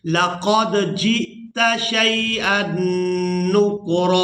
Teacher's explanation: جیم کو حمزہ ساکن کے ساتھ ملائیں گے تو جھٹکے کے ساتھ ادا کریں گے